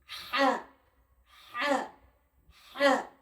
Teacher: হা উচ্চারণ হয় এই যে গলা, এটাকে কণ্ঠনালী বলা হয়, এই গলার মাঝখান হইতে উচ্চারণ হয়।